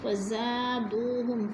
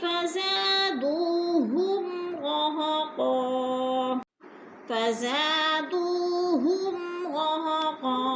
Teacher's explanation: فزا کو تھوڑا سا کھینچیں گے، الف مدہ ہے